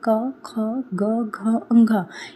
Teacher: क बोलते हो तो आपकी आवाज कहां से निकल रही है? कंठ से निकल रही है।